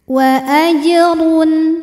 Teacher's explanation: Maghfiratu wa Jimnya hukumnya adalah qalqalah sugro karena huruf jim ini sukunnya asli bawaan dari kalimat tersebut dan ada di tengah bacaan. Maka kita pantulkan jimnya ini dengan pantulan yang kecil. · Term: Qalqalah Sugra